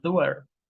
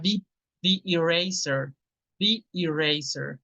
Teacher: Y cuando adelante hay una vocal, al artículo THE lo pronunciamos como the, con una I.